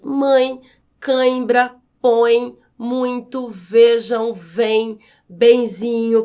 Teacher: Já no caso dos ditongos nasais, durante a pronúncia, o ar passa pela boca e também pelo nariz, como é o caso das palavras mãe, cãibra, põe, muito, vejam, vem, benzinho.